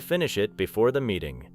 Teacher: Notice how finish it may connect and how the final sound in it may become light